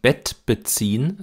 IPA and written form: bɛt bəˈt͡siːn (Bett beziehen)